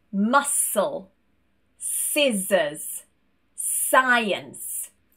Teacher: We don't want to hear that k sound, we only want that s instead.